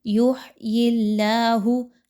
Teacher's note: ہا کو اس کے مخرج سے اچھے سے نکالیے، حلق کے درمیانی حصے سے۔ آگے دیکھیں تو حرف جلالہ اللہ سے پہلے والے حرف کے نیچے زیر ہے، ٹھیک ہے، یا کے نیچے، تو اس لیے اس کو ملاتے ہوئے باریک رکھیں گے اللہ کے حرف کو۔